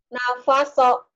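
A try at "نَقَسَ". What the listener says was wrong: Nakoso. Titiknya dua.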